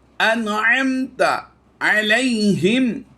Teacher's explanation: میم ساکن کے بعد حرف تا ہے یعنی با اور میم کے علاوہ ہے تو ہم نے یہاں پر اظہار شفوی کرنا ہے